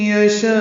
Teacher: شاء پہ مد متصل ہے، 4 حرکات سے زیادہ لمبا کریں گے